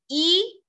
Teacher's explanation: जो जीभ आपके सामने रहती है और ऊपर रहती है, वहां से ई शुरू होता है